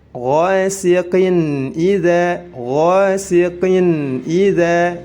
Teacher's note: za dibaca panjang karena dihukumi mad tabi'i